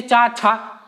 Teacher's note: चा में कम होगा, छा में बहुत ज्यादा वायु निकलती है